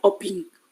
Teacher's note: Also, she hasn't been able to pronounce the suffix and prefix word of mobile, so that become oping, which means she replaced L to an NG in the end of word